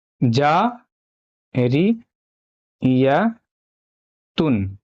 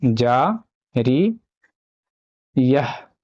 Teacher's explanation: اگر آپ یہاں پہ وقف کرتے ہیں نا تو جاریتن سے یہ ہو جائے گا جاریہ ، جیسے جا ری یہ، یعنی آپ کو کرنا کچھ نہیں